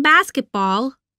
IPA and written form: ˈbɑːskətbɔːl (basketball)